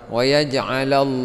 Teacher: Allah dibaca tebal, lafaz Allah itu matabi'i dibaca panjang dua harakat. Allahu fi matabi'i panjang dua harakat.